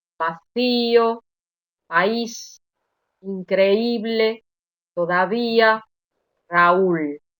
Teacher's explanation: es la vocal débil la que tiene mayor intensidad